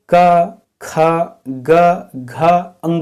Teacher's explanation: खास कर से क वर्ग का तो अपने गला से इनका उच्चारण होता है